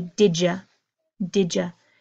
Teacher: Whenever we have a D and a Y together, it becomes this sound of j